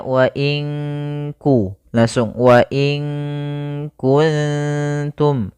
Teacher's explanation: makhraj huruf kaf itu kan dipangkal lidah mendekati huruf qof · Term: ikhfa